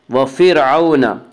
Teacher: را ساکن سے پہلے اگر زبر پیش آئے تو را ساکن کو پر پڑ جائے گا